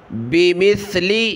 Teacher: یہ سا ہے، سین کی آواز نہیں آنی چاہیے